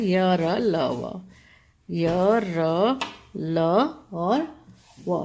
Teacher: उच्चारण जो होता है वह स्वर और व्यंजन के बीच में होता है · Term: अंतस्थ